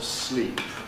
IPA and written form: sliːp (sleep)